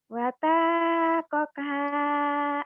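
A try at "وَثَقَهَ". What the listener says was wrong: Watakoka. Watakoka. Watanya salah. Sa bukan tak ya. terbiasa dengan Latin. Latin kan satu ada T-nya. TSA. Salah ya. T-nya hilangin. Wasa.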